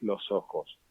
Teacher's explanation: esa s se mantiene en este caso para evitar la cacofonía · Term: conservación de la s